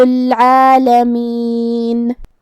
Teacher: با پہ تشدید ہے تو 2 حرف کے برابر ہم با کو پڑھیں گے۔ کلمت العالمین میں یہاں حرف العین کی ادائیگی حلق کے درمیان والے حصے سے ہے، آخری میں نون پہ رکیں گے تو اس پہ جزم سے رکیں گے تو ہم نون کو ظاہر کریں گے۔